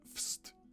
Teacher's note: the already known to us W from wszyscy, kinda softened up to an F